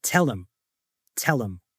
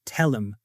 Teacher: completely ignoring the H, tell him, and changing the vowel sound from him to um